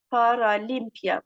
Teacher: Vurğu paralimpiya. Vurğu üçüncü hecaya düşür.